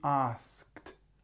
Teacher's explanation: you have have this long sound but then you have this asked and it's almost straight away a t so you don't have anything between which makes it quite difficult